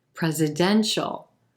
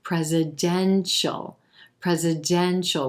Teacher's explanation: notice how the stress shifts from the first syllable to the third